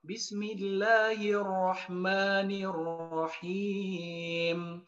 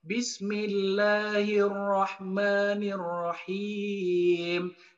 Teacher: Contoh lafaz Allah pada Ar-Rahman dan Ar-Rahim itu cukup dibaca 2 harokat. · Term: mad asli